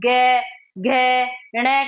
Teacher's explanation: लेकिन उसी के साथ जब हम गे, घे, णे का उच्चारण करेंगे तो आपको खुद अंदर से पता चल जाएगा कि जब हम इन वर्णों का उच्चारण कर रहे हैं तो हमारे मुख में कंपन हो रहा है इनका उच्चारण करते समय। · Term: सघोष